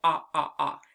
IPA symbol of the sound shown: ŏ